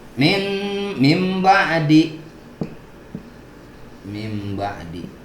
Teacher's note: Karena dia iqlab, jadi bacanya mim ba'di, nun dibalik menjadi mim.